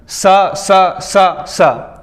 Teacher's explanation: ऊष्मी संघर्षी मतलब ये अघोष प्लस महाप्राण होते हैं। ऊष्म या संघर्षी, स स स स ये सारे संघर्षी होते हैं।